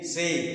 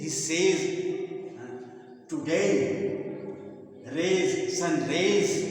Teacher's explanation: ए मतलब ए से शुरू होता है, आई पर जाकर होता है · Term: डिफ्थॉन्ग